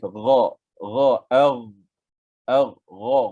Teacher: Gha getaran je nipis je. Vibration dia nipis. Gha, gha, gha baris atas gha. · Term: ghain